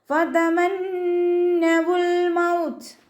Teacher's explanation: ത മഖ്റജ് വരുന്നത് നമ്മുടെ നാവിൻ്റെ അറ്റവും മേലെ മുൻപല്ലിൻ്റെ മുരടും ചേർന്നിട്ടാണ്.